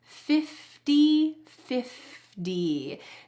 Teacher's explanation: When we say 50, the t changes to a d sound in American English.